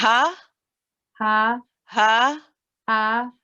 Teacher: The ha from the bottom of the throat.